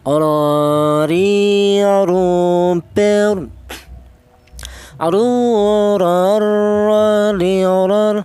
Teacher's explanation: huruf ra ini keluarnya huruf berasal dari ujung lidah menyentuh langit-langit mulut